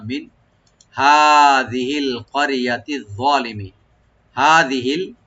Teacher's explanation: হাটাকে right দিবেন গলা শেষ থেকে, জালটাকে রাইট দিবেন।